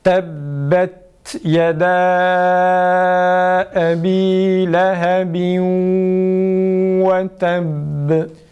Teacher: Bir de tebbet, ta'da önce nefesi kesiyoruz. Sonra ta harfini okuyoruz ve dikkat edeceğimiz husus şudur: ta'nın sin sesine benzer bir şekilde okunmaması. · dikkat edeceğimiz husus şudur: ta'nın sin sesine benzer bir şekilde okunmaması. Tebbet değil, tebbet şeklinde çıkmaması gerekir tok sesle.